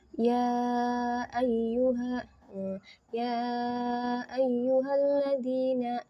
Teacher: Mad yang bertemu dengan Hamzah di kalimat yang berbeda maka dibaca panjang 4 sampai 5 harakat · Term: mad jaiz munfasil